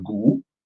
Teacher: the word for a cow or buffalo for us is gu, with the rising gu